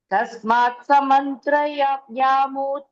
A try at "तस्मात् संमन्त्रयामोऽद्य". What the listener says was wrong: There is anuswara over there. Tasmat sammantrayamodya. Sammantra. Samma. Tasmat sammantrayamodya.